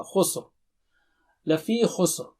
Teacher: یہاں بھی را رکتے وقت موٹا ہوگا